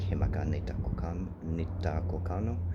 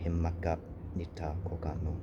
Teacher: you have to close your throat off before starting the next word, so you would never run these words together like himaka nita kokano.